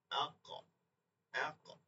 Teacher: এটা হচ্ছে হরফের একটা গুণ, যে এর মধ্যে একটা প্রতিধ্বনি হয়। · জিহ্বার গোড়া তার বরাবর তালুর সঙ্গে লাগাইয়া কি হবে, অফ উচ্চারিত হবে। কিভাবে পাই এই অফটা, যদি আমি যজন দিয়ে দিই তাইলেই বুঝবো, আক, আক। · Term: কলকলা, আকসাই লিসান